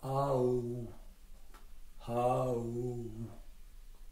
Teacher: Entre a, o, ou, on va de l'arrière vers l'avant.